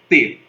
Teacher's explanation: A língua ficou entre os dentes, concorda? É uma língua dental. Então, há uma interrupção na passagem do ar.